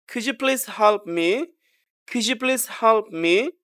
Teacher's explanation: Polite questions. Slight falling tone মানে হালকা falling tone হবে।